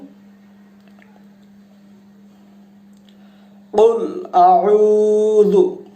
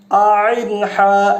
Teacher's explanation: আইনটা কিভাবে উচ্চারিত হয়, হলকের মাঝখান থেকে।